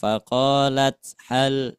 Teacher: Soalnya kalau ta bukan huruf qol qolah Jadi tidak boleh dipantulkan